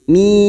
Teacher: Kita panjangkan 6 harokat dan ujungnya bibir kita tertutup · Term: mad lazim harfi muqaffaf